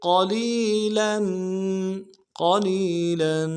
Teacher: قاف کو موٹا ادا کرنا ہے، لام کو یا کے ساتھ ملانا ہے، یا مدہ ایک الف میں کھینچیں گے